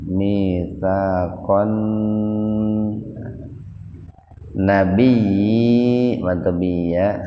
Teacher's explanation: Bi matobi iya, fa mad badal, kon alif lam samsiyah gunnah atau idgham samsiyah gunnah. Jadi membacanya dimasukkan ke huruf setelah lam. Di sini huruf setelah lamnya itu nun, dan nun itu merupakan huruf gunnah. Jadi membacanya dimasukkan dengan mendengung.